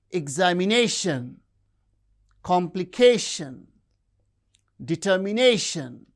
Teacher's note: The words end with shun t i o n or s i o n have stress on the penultimate syllable